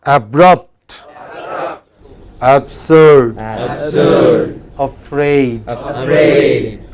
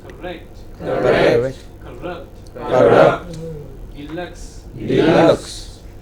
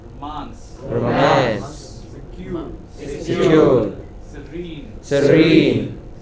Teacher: The main stress on the final syllable.